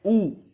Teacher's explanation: ऊ में क्या हो रहा है, जीभ के पश्च भाग का बिल्कुल उपयोग हो रहा है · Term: पश्च स्वर